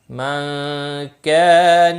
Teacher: من كان نون ساکن کے بعد حروف اخفا کا کاف ہے، اخفا حقیقی ہوگا، کا الف مدہ ہے، ایک الف کے برابر کھینچ کر پڑھیں گے